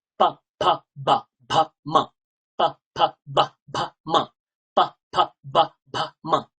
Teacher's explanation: যেহেতু দুটো ঠোঁটের দ্বারা এরা উচ্চারিত হয়, তাই জন্য এদেরকে বলা হয় ওষ্ঠ।